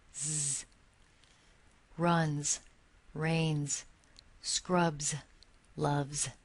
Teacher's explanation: are all pronounced they are spelled with the final s but they are pronounced as if it's a z it's a voice pronunciation which means the vocal cords vibrate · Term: final z sound, final Z sound